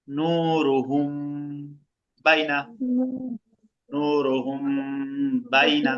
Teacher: মিম সাকিনের পরে বা আছে, মিম সাকিনটাকে গুণা করব।